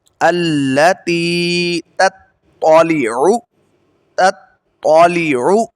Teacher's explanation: اب ادھر آپ نے پڑھنا ہے الذی التی تطلع علی یہ جو تا ہے باریک، یہ تا موٹے کے ساتھ میچ کر رہی ہے، تو آپ نے ادھر پہلا تا باریک پڑھنا ہے اور دوسرا تا جو ہے موٹا پڑھنا ہے